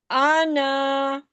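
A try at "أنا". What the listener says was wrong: آنا، آنا بس، کھینچنا نہیں ہے اس اس میں الف پڑھا نہیں جائے گا، ٹھیک ہے؟ ہجے جب کرتے ہیں نا، حمزہ زبر آ، نون الف زبر نا، ہجے میں تو پڑھیں گے لیکن جب آواز نکالیں گے، ساؤنڈ پڑھیں گے تو الف کو نہیں پڑھیں گے، صرف بولیں گے آنا، صحیح ہے؟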